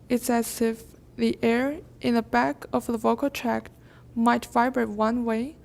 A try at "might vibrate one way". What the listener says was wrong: One way. Good.